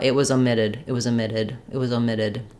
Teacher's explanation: that o is unstressed in the first syllable it's going to lose some of that Clarity and it's going to lose some of that dip thong quality